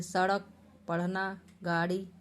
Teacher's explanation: इनका उच्चारण करते समय जीभ झटके से ऊपर उठ जाती है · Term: उक्षिप्त व्यंजन